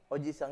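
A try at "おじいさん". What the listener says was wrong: Penyebutnya agak panjang, lebih panjang. Di I-nya, Pak. Di I-nya, jadi I-nya agak lebih banyak tuh. Oji-sang.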